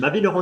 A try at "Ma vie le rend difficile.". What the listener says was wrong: difficile. No pauses. What's the information word? I think difficult is the information word. Alors ma vie le rend difficile.